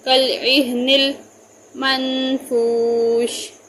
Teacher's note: نون پر گنہ ہوگا، فا کو واو ساکن کی وجہ سے لمبا کریں گے، شین کا زیر ہٹا کر وقف کریں گے، منفوش۔